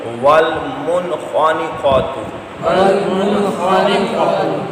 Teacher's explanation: نون ساکن کے بعد خا آ گیا حروف حلقی میں شامل ہے غنہ نہیں کریں گے اظہار کریں گے یعنی نون ساکن کو ظاہر کریں گے